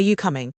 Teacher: Notice the rising intonation at the end.